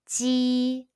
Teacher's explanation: It's like the J in the English word Jesus, but unvoiced. When you pronounce the Mandarin Chinese Ji sound, your lips are spread like a smile.